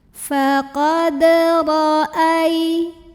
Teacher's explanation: Ro-nya dibunyikan secara tafkhim karena ro-nya berbaris di atas. Bacanya tebal, lidah dinaikkan yang belakang, pangkal lidah ya, ro.